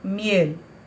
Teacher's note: la consonante L, diferentemente de lo que ocurre en portugués, nunca se convierte en una U. Entonces, la palabra se dice miel.